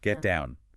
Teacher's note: The T in get is held before you release the D in down. You don't say get to down.